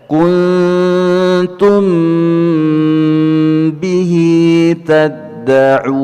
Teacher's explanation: ada mim yang sukun bertemu dengan ba, ikhfa syafawi juga ditahan 2 harokat